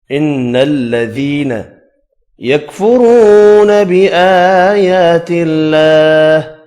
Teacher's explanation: واو مدہ اور 2 کھڑی زبر، ایک ایک الف کی مقدار میں کھینچ کر پڑھیں گے۔